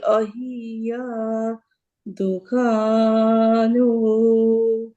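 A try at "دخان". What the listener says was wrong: আচ্ছা এখানে দেখেন, এই যে এখানে এইটাকে আপনি উ বলতেছেন, এটা কি আসলে? আমি আমি জিজ্ঞেস করলাম যে এই জিনিসটা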